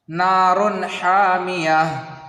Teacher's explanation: پھر یہاں دیکھیے نار حامیہ، یہ را کے اوپر 2 پیش ہے اور یہ تنوین ہے اور حا حروف حلقی میں سے ہے، اس کو بغیر غنہ کے جلدی پڑھنا ہے